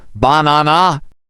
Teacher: in the word banana, we stress the second syllable, banana. Right, and stressing the correct syllables can help your words sound more natural. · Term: word stress